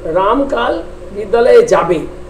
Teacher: একটা হচ্ছে বিবৃতি সূচক বাক্য, যে রামকাল বিদ্যালয়ে যাবে, এটি হচ্ছে কি না সুরটা কি হচ্ছে না বিবৃতি সূচক বাক্যে প্রথমে গিয়ে তারপরে নিচে নামছে, এটা সুরটা নেমে যাচ্ছে।